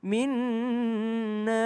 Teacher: panjang karena setelahnya ada huruf hamzah